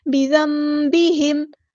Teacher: نون ساکن کے بعد با ہے تو یہاں پہ اقلاب ہوگا، ایسے میم کی آواز آئے گی